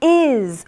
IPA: ɪz